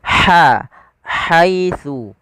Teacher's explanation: Dan huruf ha ini memiliki sifat hames. Makhrajnya dari tengah tenggorokan kita